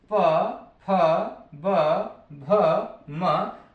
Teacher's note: जब तक दोनों ओष्ठ हमारे आपस में मिलेंगे नहीं तब तक प वर्ग का उच्चारण हो ही नहीं सकता